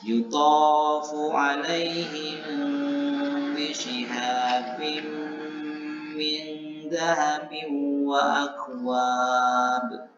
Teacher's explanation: Bagaimana cara membaca ikhfa safawi ini, yaitu membacakan atau mengucapkan mim as-sakinah yang berbaris sukun ini, asifati bainal izhar wal idgham, dengan sifatnya antara izhar jelas dan idgham masuk, atau dibaca samar-samar. Bil gunnati kemudian disertai dengan dengung, dibaca selama dua harokat, wa adamu tasydid dan tidak bertasydid, kemudian diberikan sedikit rongga di antara dua bibir.